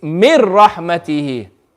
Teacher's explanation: You're substituting the noon for a ra. So when we read it together, we're going to read it it's mir rahmatihi. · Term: complete idgham